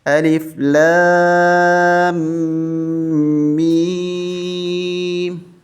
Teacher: سورہ بقرہ کی پہلی آیت کی طرح اس کو بھی کھینچیں گے، لام کو اور میم کو، ان دونوں کو کھینچیں گے اور میم کے اوپر تشدید سختی کے ساتھ پڑھیں گے